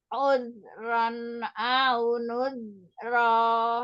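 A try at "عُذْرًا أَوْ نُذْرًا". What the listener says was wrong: Ya, au. Jangan au. Kalau au, wawunya kayak ada domah. Udhran au nudhra. Ya, au sampai monyong. Au nudhra.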